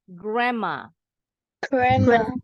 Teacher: berubah bunyi jadi m grma grma ini juga sama d-nya silent n-nya berubah bunyi jadi m